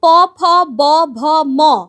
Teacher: এই সবকটাই দেখো ঠোঁটটা বন্ধ হয়ে গিয়ে খুলে যাচ্ছে, তাহলে এগুলোকেই আমরা বলছি ওষ্ঠ ব্যঞ্জন।